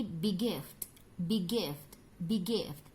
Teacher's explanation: Geminate atau linking same stop sound, yaitu merangkap bunyi yang sama. Merangkap bunyi konsonan yang sama.